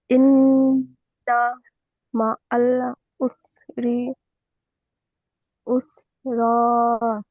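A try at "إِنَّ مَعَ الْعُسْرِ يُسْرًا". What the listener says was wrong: উসরি ইউসরা, ইয়াসিন পে ইউস। প্রথমে উস হবে, দ্বিতীয়টি ইউস হবে। তাহলে ইন্না মাআল উসরি ইউসরা।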